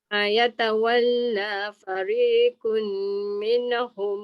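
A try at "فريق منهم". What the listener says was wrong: Fariqum. Masuk mim terus. Fariqum.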